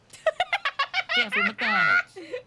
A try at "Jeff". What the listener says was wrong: There's no S. There's no R-E-Y.